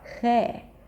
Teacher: you're not using the American R. You're using the Portuguese R.